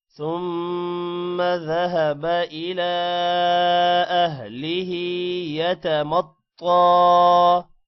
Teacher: الى لام کے اوپر کھڑی زبر ہے اور مد ہے لمبا کریں گے